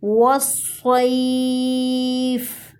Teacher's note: صاد کو موٹا پڑھیں گے اور زور دیں گے۔